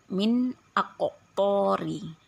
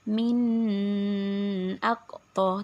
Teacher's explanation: jadi kali ini bunyi Nun matinya harus dijelaskan dan tidak boleh dilagu tidak boleh di dengungkan MIN AQ jadi nunnya harus jelas Nun matinya harus jelas dan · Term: izhar, izhar halki